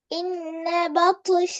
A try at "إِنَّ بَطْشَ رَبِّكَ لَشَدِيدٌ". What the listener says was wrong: பா அல்ல ப. பே மாத்தக்கூடாது.